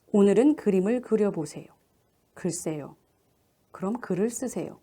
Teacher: 으는 원순 모음이 아니기 때문에 입술을 둥글려서 내밀지 않도록 하는 것이 가장 중요한 점입니다. 그래서 으를 발음할 때는 입술을 살짝 연 채로 평평하게 두어야 한다라고 하는 것을 염두에 두도록 합니다.